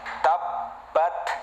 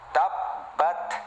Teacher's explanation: Huruf ta sama seperti huruf kaf ya. Sebelum mengeluarkan hamas kita tekan dulu suaranya, yaitu mempunyai sifat syiddah ya. Tertekan dulu baru ada udara keluar.